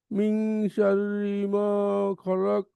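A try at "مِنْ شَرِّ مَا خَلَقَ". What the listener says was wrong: মা না, মিং গুন্না, মিং শাররি মা খলাক।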